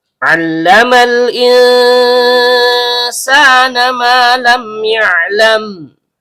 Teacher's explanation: Nun, ujung lidah bertemu dengan langit-langit bagian tengah.